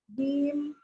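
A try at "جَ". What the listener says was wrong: Bukan jim hurufnya ketika sudah fathah jadi ja. Masih ketarik ya. Jadi dia satu ketuk. Pakai kode satu ketuk aja. Satu ketukan saja.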